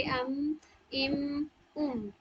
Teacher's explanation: मीम की अदायगी में देखिए कि दोनों होठों के सूखे हिस्से मिलकर मीम की अदायगी करते हैं,